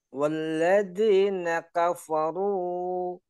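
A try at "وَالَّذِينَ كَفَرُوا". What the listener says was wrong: Nah, ru-nya hati-hati jangan kepanjangan. Ru 2 harokat. Walladzina kafaru.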